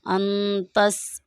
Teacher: نون ساکن ہے، نون ساکن کے بعد تا ہے، یعنی حروف ہلکی کا کوئی لفظ نہیں ہے، تو اس لیے ہم یہاں پر غنہ کر کے پڑھیں گے۔